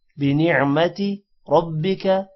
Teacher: را موٹا ہوگا اور با کے ساتھ ملے گا شد کی وجہ سے